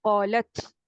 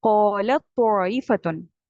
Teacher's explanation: بٹ اب آپ کو یہ بتاتا ہے ادغام کا رول کہ اب آپ نے تا کو نہیں ہمس کرنا، آپ نے ڈائریکٹ تا کو تو میں ملا دینا ہے